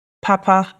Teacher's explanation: That has two high tones, and that means good.